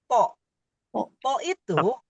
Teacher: To itu sama dengan dal, tidak ada hembusan nafas.